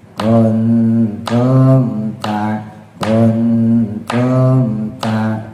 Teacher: Nah, itu sudah nambah harakat ya. Jadi setelah sempurna mimnya langsung dimasukin kuntum ta kuntum ta. Jadi langsung aja ya jangan ditambahin em lagi. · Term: izhar syafawi